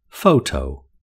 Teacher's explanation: The word photo has two syllables and has the main stress on the first syllable.